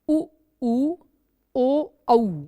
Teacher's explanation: तो वृत्तमुखी का मतलब है कि जिन स्वरों को उच्चारण करने में ओठों की आकृति वृत्त के अनुसार गोलाकार होती है उन स्वरों को वृत्तमुखी स्वर कहते हैं